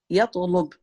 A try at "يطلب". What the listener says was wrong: بس make the lam lighter.